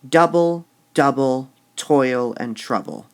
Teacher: double double toil and trouble now toil is a tricky word toil is only one syllable it's a strong one though